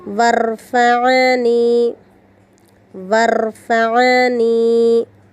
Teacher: عین ساکنہ کو حمزہ بنانے سے بچائیں، عین کو حلق کے درمیانی حصے سے پڑھنا ہے، آخری میں یا مدہ کا خیال رکھیں۔